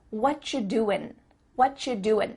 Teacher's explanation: at the end of the word doing that g also gets cut out